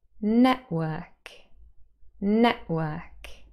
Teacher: so there's a little stop there and that's the glottal stop